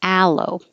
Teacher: it's the same a as in hat. So you have to open and lips back.